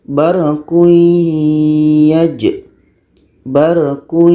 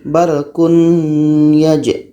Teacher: Bunyi tanwin ini masuk kepada bunyi ya secara dengung. Menjadi barquyaj. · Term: idgham